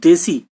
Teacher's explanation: এ এবং ই এই স্বর দুটি উচ্চারণ স্থান কিন্তু ভিন্ন ভিন্ন, এর আলাদা স্থান, হস্যইকারের আলাদা স্থান।